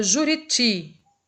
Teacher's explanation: A gente chama de oxítona quando a sílaba mais forte da palavra for a última. Então, na palavra Juriti, o ti, por ser o mais forte, então a gente classifica essa palavra como sendo oxítona